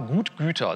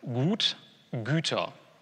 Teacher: wenn Sie das U umlauten, wie das bei dem Plural von Gut passiert, also das im Sinne von Landgut oder sowas, da bewegen Sie Ihre Zunge dann im Wesentlichen einfach nach vorne